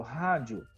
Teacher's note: como o I é mais fraco e o O é mais forte, está crescendo do mais fraco para o mais forte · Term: ditongo crescente